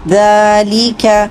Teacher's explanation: 2 حرکت لمبا کریں گے یا مد کی وجہ سے، ذالک ذال کو لمبا کریں گے 2 حرکت، کھڑا زبر ہے اس لیے · کاف کو ہمز کے ساتھ ادا کریں گے